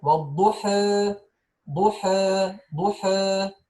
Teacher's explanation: The fatha comes closer to the kasra and the alif comes closer to the ya. So the imala, pronouncing a sound, listen, between alif and ya.